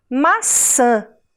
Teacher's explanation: Esse som, que parece que sai pelo nariz, porque é o ar que sai por ali, é um som nasal.